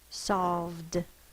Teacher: This is a voiced v sound, so it's going to be the d sound.